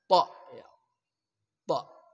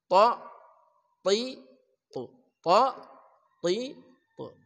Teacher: Ta itu unsur itbaq, mengatup dengan kuat di langit-langit atas kita